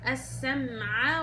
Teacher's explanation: وهنا اختلاس الفتحة وارد اذا ما انتبهتيش لفتح الفك